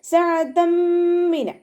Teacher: തെൻവീനിലുള്ള നൂനിൻ്റെ സൗണ്ടിനെ മീമിലേക്ക് ലയിപ്പിച്ച് ഒന്നയോടുകൂടി ഓതാൻ ശ്രദ്ധിക്കുക. സഅതം മിന അതുപോലെ നന്നായിട്ട് മണിച്ചു കൊടുക്കുക കേട്ടോ. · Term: ഇദ്ഗാം ബിഗുന്നയുടെ